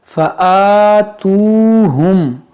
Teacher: یہاں پر دیکھیں حمزہ پر کھڑا زبر ہے اس کو کھینچیں گے، یہاں واو مدہ ہے اس کو بھی کھینچیں گے.